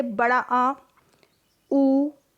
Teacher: पश्च स्वर, जिसमें जीभ के पीछे का हिस्सा मूव करेगा